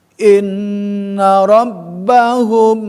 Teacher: Tahan, karena mim sukun bertemu sama huruf ba. Dua huruf asafatani atau dua huruf safatain yang bertemu, mim huruf safawi, huruf safatani, huruf bibir, dan ba juga huruf bibir. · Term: Ikhfa, safawi